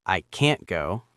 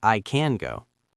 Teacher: We know it's negative because the vowel is slightly longer or the air stops suddenly.